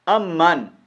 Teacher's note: یہ میم مشدد ہے اور میم مشدد کو کیا کریں گے، اس کا غنہ کریں گے